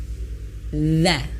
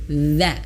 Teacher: Nah, huruf dha perlu kita ketahui dulu makhrajnya, yaitu letak suaranya, tempat keluar dia tempat dia keluar itu makhrajnya, yaitu ujung lidah menyentuh ujung gigi seri atas